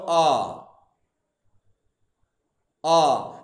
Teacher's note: এই আ উচ্চারণ করতে গেলে জিভটা আমাদের সামনেও আসছে না, জিভটা আমাদের পেছনেও যাচ্ছে না, ঠিক মধ্যবর্তী স্থানে আছে। যে স্বরধ্বনি বা সম্মুখ ও পশ্চাৎ স্বরধ্বনির মধ্যবর্তী স্থানে জিহ্বাকে রেখে যে স্বরধ্বনি উচ্চারণ করা হয় তাকে বলা হয় কেন্দ্রীয় স্বরধ্বনি।